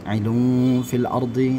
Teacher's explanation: Inni ja'ilun fil ardi, kemudian ja-nya panjang 2 harakat, ilun fil ardi, dhammatain bertemu dengan fa, maka dia diikhfakan. Ya, dibaca samar-samar.